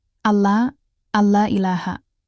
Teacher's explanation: Jadi, pengucapan yang benar adalah suara nun. Sukun langsung melebur ke lam dengan tegas tanpa ditahan atau didengungkan. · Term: idgham bila gunnah